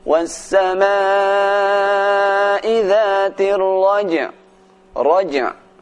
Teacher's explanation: Ar-raj', suara jim dibaca dengan kuat qalqalahnya.